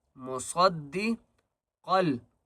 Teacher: صاد کو بھی موٹا کریں گے اور قاف کو بھی موٹا کر کے پڑھیں گے